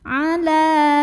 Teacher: Mad tabi'inya mad tabi'i muqaddar karena ada fathah panjang pada huruf lam. Maka kita panjangkan lamnya ini 2 harokat saja.